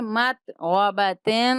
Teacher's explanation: تا پہ تنوین ہے تو ہم غنہ کریں گے